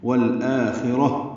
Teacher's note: را کو ہا سے ملا دیں گے وقفاً، یہ تا مربوطہ ہا بن جائے گی